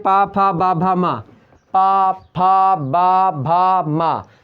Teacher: जब आप बोलते हैं तो आपके ओठ जो दोनों होते हैं ऊपर और नीचे वाले दोनों आपस में मिल जाते हैं, पा फा बा भा मा, मतलब ये प्रकार से ओष्ठ व्यंजन है।